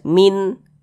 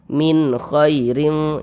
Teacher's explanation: bunyi n-nya itu jelas, min. Nah, kemudian dia tidak didengungkan, maka dibaca pendek saja